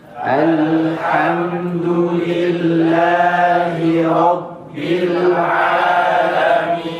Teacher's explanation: Maal ghunah. Ada gunah di huruf nunnya di alamin.